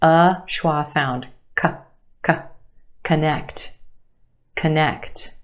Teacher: Very quick, unemphasized. Uh schwa sound.